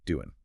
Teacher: And then finally that ing ending on doing. Very commonly the final G sound gets dropped in informal speech.